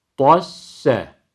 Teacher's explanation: Her ikisi de hem birinci sakin sin harfi hem de ikinci fethalı sin harfi ikisi de ince olacak.